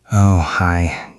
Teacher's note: Listen to the way he uses the word oh at the beginning. It sounds like a sigh.